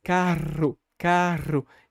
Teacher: Eu bato a língua várias vezes e aí faz aquele R enrolado